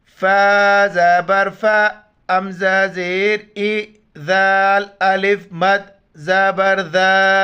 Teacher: مد ہے، 4 الف کی مقدار کھینچنا ہے